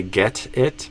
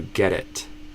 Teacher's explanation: that first T can become a flap T because it's between two vowel sounds